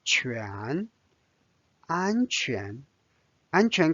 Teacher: 安 first tone, 安 flat. 全 rising tone or second tone,